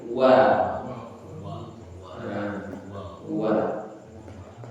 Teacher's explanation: Jadi wa itu betul-betul dia mayun dulu baru ditarik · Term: huruf wau